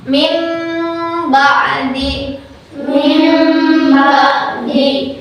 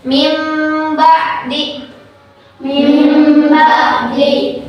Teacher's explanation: Jangan dibaca min ba'di atau jangan dibaca ee mil ba'di. Tapi karena ini iqlab, jadi anggap saja nun mati yang ini adalah huruf mim sukun.